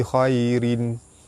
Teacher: Ra baris bawah dibaca nipis.